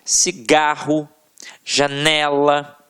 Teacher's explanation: a tônica está na penúltima sílaba